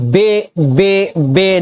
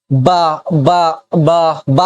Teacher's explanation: بے دیکھ رہو دونوں ہونٹ مل رہا ہے آپس میں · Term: حروف صفی